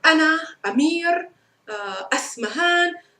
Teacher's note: when you begin a word with an a sound you can't escape from it you have a pronounced glottal stop